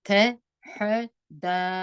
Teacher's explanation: لام به اظهار کړي ډېر بیا نه ټینګوي